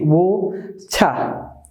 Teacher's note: in the British English, the T is pronounced as normal T, water. Unlike the American English, they pronounce it as water.